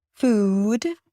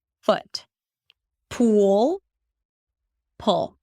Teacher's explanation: one is definitely longer, double the length of a very neutral single vowel, fuwd, and the other one is super short, super relaxed, foot, pull, pull.